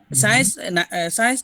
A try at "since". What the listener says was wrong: আচ্ছা, এটা কিন্তু সায়েন্স হবে না, উচ্চারণ হবে সিন্স। আবার বলেন তো, সিন্স।